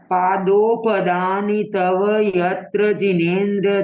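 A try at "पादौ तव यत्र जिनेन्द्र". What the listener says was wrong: हा बिल्कुल सही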